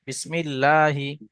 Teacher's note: মিমের নিচে জের এসছে, জেরটি হলো হারাকাত, হারাকাতে পড়া তাড়াতাড়ি পড়তে হয়, টান দেওয়া নিষেধ। আল্লাহ শব্দের আগে মিমের নিচে জের এসছে, তাই আল্লাহ শব্দের লামটাকে বারিক অর্থাৎ লা পড়তে হয়। লামের উপরে তাসদিদ আসছে, তাসদিদওয়ালা অক্ষরকে ডবল উচ্চারণ করতে হয়, একবার ডান দিকে অক্ষরের সঙ্গে মিলিয়ে, একবার নিজে নিজে।